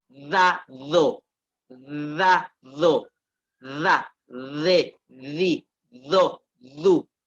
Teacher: La D es dental. Se pronuncia entre los dientes.